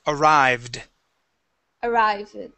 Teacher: we won't pronounce an id sound there. Okay, it would only be the D.